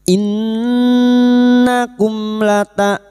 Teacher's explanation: mim sukun bertemu lam idhar safawi, mim sukun dibaca jelas tanpa mendengung